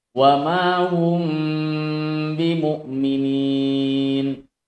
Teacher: Cara membacanya adalah dengan menyentuhkan kedua bibir disertai dengan gunnah. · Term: ikhfa syafawi